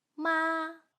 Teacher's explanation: this tone is long and stable. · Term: high-level tone